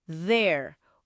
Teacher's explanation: O th que é vozeado, vibra um pouquinho